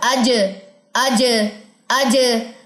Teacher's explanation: لگائیے زبان کا درمیان تالو کے مقابل. مقابل مطلب اس کے بالکل سامنے. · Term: شدہ